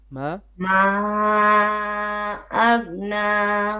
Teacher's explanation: here we have a mad al munfasil, 4 beats.